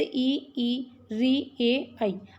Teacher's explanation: जिनमें हमारे जीभ का आगे का भाग काम करेगा वो अग्र स्वर होंगे